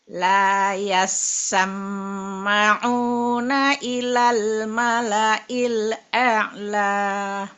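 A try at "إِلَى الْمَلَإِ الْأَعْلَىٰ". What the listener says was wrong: Ilal mala'il a'lanya saja, coba. Ainnya lebih ditahan, jadi ngalir. Al-a'la. A'la. Jadi lebih nahan ya.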